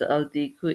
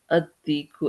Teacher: when you write it as the rooster, it's written as al diku, but it's not going to be pronounced as al diku, it's ad diku. And you can see, so first of all, it's ad diku, which makes dal, this letter dal, which is this letter here, it makes this a sun letter, okay?